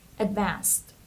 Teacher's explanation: And the ed here, we pronounce it like t, advanced.